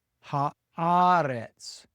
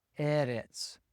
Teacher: arets, which was erets, but the vowel changed because of the addition of the definite article